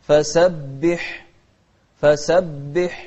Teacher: الحاء من أحرف الهمس